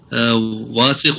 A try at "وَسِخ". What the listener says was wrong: اس کو واسقن نہ پڑھیں، یہ واو کے بعد الف نہیں ہے.